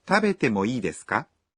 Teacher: When you ask for permission, you add ka at the end of the sentence and say it with a rising intonation.